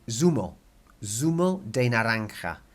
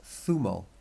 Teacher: if you were in Spain rather than in Mexico or South America, it would actually be theta, because it's a th sound